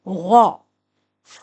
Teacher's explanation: غائن حلق کے پہلے حصے سے ادا ہوتا ہے